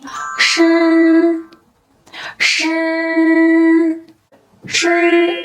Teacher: the tip of the tongue is raised and approaches the front of the hard palate, forming a narrow slit. The airflow is then squeezed out from this slit, causing the vocal cords to vibrate.